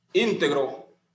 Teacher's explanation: su mayor fuerza e intensidad recae en la antepenúltima · Aquí tenemos otro ejemplo, íntegro, que es una palabra esdrújula y como dice la regla, se acentúa, o sea, siempre se acentúan y su mayor fuerza o intensidad recae en la antepenúltima sílaba